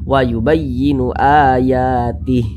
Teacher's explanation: Nah, nggak dibaca mad silah qasirahnya. Mad silah qasirahnya itu kalau berhenti dia nggak dibaca, nggak berfungsi. Nah, jadi kalau diteruskan baru berfungsi, dia panjang.